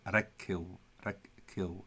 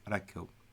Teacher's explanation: So you notice when they say it, actually making the K sound twice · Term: double K